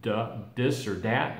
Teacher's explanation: they pronounce those words with a D instead of a TH. That's a feature that's common in a lot of urban accents, and it originates from the fact that English is one of the few languages that has the TH sound.